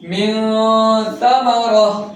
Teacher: নুন সাকিন বা তানবিনকে গুন্নাহ করে পড়িতে হয় অর্থাৎ নাকের মধ্যে লুকিয়ে পড়িতে হয়